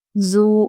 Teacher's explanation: زو ہم کھینچیں گے کیونکہ وہ ساکن سے پہلے پیش حروف مدہ ہے